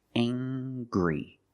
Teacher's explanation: We use the nasal sound, plus the hard G.